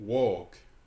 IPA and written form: wɔːk (walk)